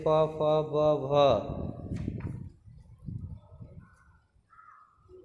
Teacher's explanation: इनका उच्चारण दोनों होठों की सहायता से होता है। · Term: ओष्ठ